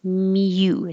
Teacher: mute starts with your tongue in a very high y position miu sounds like a cat mew i needed a mute the